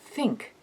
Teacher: if you put your tongue between your teeth and let air flow out you get the consonant as in the beginning of the word think